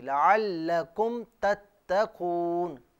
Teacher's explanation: لعلکم میں جو آپ نے میم ساکن پر غنہ کیا نا، یہ نہ کیجیے